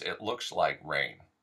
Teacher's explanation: the S becoming uh almost an sh sound